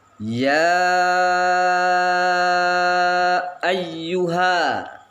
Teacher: ya lima harkat, lima ketukan. Mad tabi'i diikuti hamzah, tidak dalam satu kalimat. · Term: mad jaiz munfasil